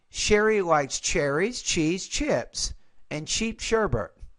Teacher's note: so you got rise rise rise and then fall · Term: intonation patterns